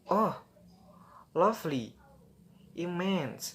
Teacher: rise fall, often sound surprised or impressed.